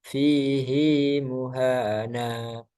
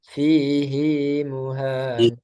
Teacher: khusus pada kata ini hi-nya dibaca panjang. Fihi muhana.